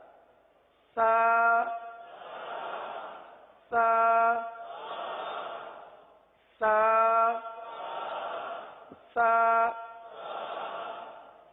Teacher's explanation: اس کو نرمی کے ساتھ اس طرح لگائیں کہ گویا کہ سانس جاری ہو رہا ہو